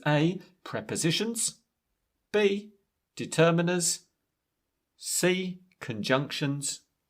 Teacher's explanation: It was rising intonation like there was going to be another one.